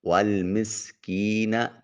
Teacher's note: سین حرف صفیریہ ہے، آواز میں سیٹی کی آواز آئے گی